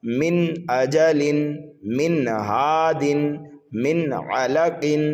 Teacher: یعنی نون ساکن اور تنوین کی آواز کو ظاہر کر کے پڑھا جاتا ہے، ناک وغیرہ میں چھپا کر غنہ نہیں کیا جاتا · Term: اظہار حلقی